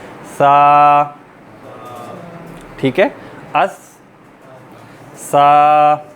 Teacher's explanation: ज़बान थोड़ी सी बाहर निकलेगी और ज़बान की टिप जो है वो अगले दोनों दांतों की टिप पर बाहर लगेगी